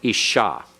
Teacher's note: the Sheen has to be pronounced twice to close the first syllable ish and to begin the next one Isha all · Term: doubling dogish